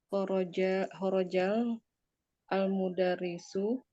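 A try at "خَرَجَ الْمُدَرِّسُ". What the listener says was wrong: Khorojal mudarisu. Kalau sudah khorojal berarti nggak usah al-mudarisu lagi. Kan lamnya udah dibaca. Khorojal mudarisu.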